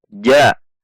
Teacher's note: di tengah lidah bertemu dengan langit-langit atas bagian tengah